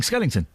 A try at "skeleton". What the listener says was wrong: It's not Skellington. It's Skell-E-ton. Well, it sounds like you're saying Skellington. Still sounds like Skellington.